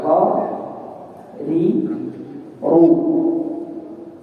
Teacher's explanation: ujung lidah dengan punggung lidah bersentuhan dengan gusi atas dan ada getaran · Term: huruf ra